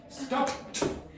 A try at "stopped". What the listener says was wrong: Now you don't hear anything. Did you hear that? It was stop. Okay, there was no stop.